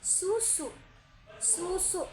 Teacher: ujung lidah mendekati gusi, udara dihembus tanpa pita suara